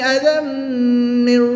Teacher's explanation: تنوین کے بعد میم حرف رملون میں سے ہے تو یہاں پر ادغام مع الغنہ ہوگا